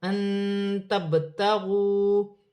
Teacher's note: با ساکن ہے، حروف قلقلہ میں سے ہے، قلقلے کے ساتھ ادا کیا جائے گا